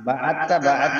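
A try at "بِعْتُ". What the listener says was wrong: না, বাআতা তো না, বিইতা, বিইতু,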